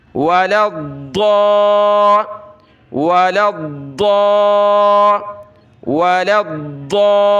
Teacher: میں زبان لگاتا ہوں دائیں طرف داڑھ سے، زبان کی کروٹ، ضاد ضا ضا، یہ ضا ہے، یہ دال بھی نہیں ہے اور ضا بھی نہیں ہے.